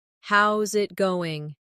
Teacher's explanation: How is it going? becomes How's it goin'? The is disappears, and the final G in going often softens. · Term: connected speech